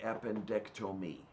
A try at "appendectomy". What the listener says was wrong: this is another case of you insisting on pronouncing O in a way that English speakers usually don't. Appendectomy. But it sounded like you were saying appendectomy. Like you said tome instead of Tom. it sounds wrong that way. Tom, Tom, not tome. if you say appendectomy, it just sounds weird.